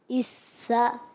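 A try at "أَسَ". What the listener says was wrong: اس میں دیکھیں سیٹی سیٹی ادا کریں.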